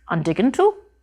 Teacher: turns the T sound of the following verb into a d though to represent this on paper we just put the D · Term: eclipsis